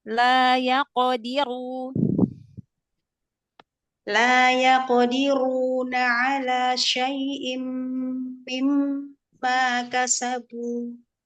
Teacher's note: Rendahkan huruf ma, fathahnya. Ro-nya tebalkan.